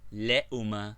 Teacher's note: Hamza with waw, as in le'uma, to be mean, le'uma, both vowels pronounced very short.